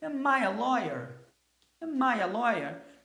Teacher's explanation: Reparem que a segunda palavra começa a receber a tônica, para passar essa intenção de curiosidade.